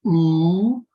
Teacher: you move to ooh you'll begin to close the sound into a into a rounded vowel